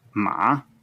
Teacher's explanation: it's always taught as a falling rising tone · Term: third tone